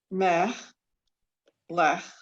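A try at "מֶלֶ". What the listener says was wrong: No, slow it down. Just, there's only 2 letters there. Each one has a vowel eh under it. No, so me, le, right? There's no ch going on, right? It's just the me and the le.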